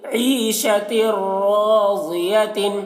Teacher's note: عین کو حلق سے ادا کر رہے ہیں, یہاں پر یا مدہ ہے تو تھوڑا کھینچ رہے ہیں.